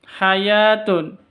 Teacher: ya panjang dua ketuk ada tanda berdiri di atasnya